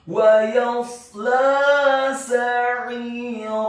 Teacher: Wa yasla sa'ira, kata sa'ira, huruf sin-nya dibaca fathah 1 harokat, huruf ain-nya ditekankan keluar dari tenggorokan bagian tengah kasrah 2 harokat karena setelahnya ada huruf ya sukun, dan di akhir ayat huruf ra-nya dibaca tafkhim tebal fathah 2 harokat karena setelahnya ada alif.